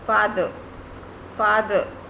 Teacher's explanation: R should be kept silent because when R is followed by a vowel sound, that is a.